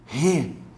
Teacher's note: eu costumo dizer que la re é o R carioca. Re. Esse R aspirado do carioca.